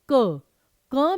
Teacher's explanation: क में अ की ध्वनि स्वर की ध्वनि छिपी रहती है